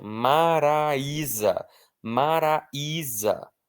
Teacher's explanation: O I está sozinho na sílaba, ele é a parte forte da palavra, porque não é Maraísa, não é Maraizá, é Maraísa.